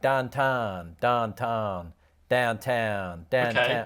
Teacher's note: people from Pittsburgh pronounce the vowel sound in town like tan